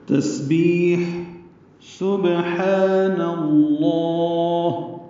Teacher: سین صفیر کی آواز سے ادا کرنا ہے، یعنی سیٹی کی آواز سے، باریک آواز ہوگی ، با سے ملائیں گے، با ساکن ہے، اس پہ قلقلہ